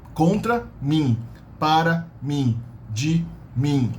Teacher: Observe that the final M is only a nasal twang in the end of the vowel. It's not a full M with the lips. No, not mim, it's min, as if it's an NG, min.